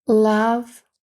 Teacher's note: о передається короткою а